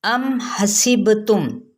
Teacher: میم پہ اظہار شفوی ہے